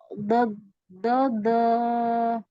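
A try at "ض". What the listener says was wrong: lagi naikkan pangkal lidahnya lagi. Bo, bo. Jadi tebal ya. Nah, ini masih kurang tebal.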